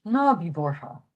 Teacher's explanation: the TH is not pronounced the. In this case, it's just H.